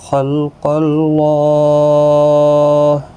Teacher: خا، قاف دونوں حروف مستعلیہ میں سے ہیں، پر پڑھا جائیں گے،